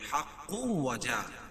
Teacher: حق تنوین کے بعد ادغام مع الغنہ کے 4 حرفوں میں سے واو ہے تو یہاں غنہ کر کے پڑھیں گے